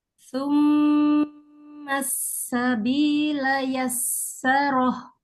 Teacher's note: Tahan dulu, sinnya tasdid.